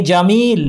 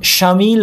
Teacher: জিম মিম লাম তিনটাই হচ্ছে ভোকাল কর্ডস কাঁপছে